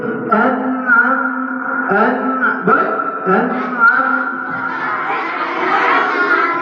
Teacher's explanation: এটাকে যেহেতু নুন আছে, নুনটা তার সাথে ধরো, অতএব এখানে একটু কি করতে হবে? এক আলিফের 4 ভাগের 1 ভাগ সমপরিমাণ গুণনার মতো করতে হবে। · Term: নুন সাকিন